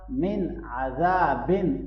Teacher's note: نون ساکن کے بعد عین حرف حلقی میں سے ہے تو یہاں اظہار ہوگا۔ مِنْ عَذَابٍ، ذال کو نرمی سے پڑھیں گے، الف بندہ کو لمبا کریں گے۔